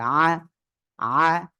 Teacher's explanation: আইনের সময় বাতাস বন্ধ, কিন্তু আওয়াজটা মধ্যম থাকবে, তারপরে উপরে তালু থেকে পৃথক থাকবে।